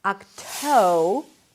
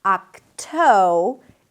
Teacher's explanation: You can make the T a little aspirated so it feels like there is a little H right after